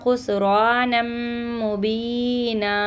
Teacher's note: यहाँ पे गुन्ना कीजिएगा मीम मुशद्दद का और इदगाम का कायदा लगेगा यहाँ पे।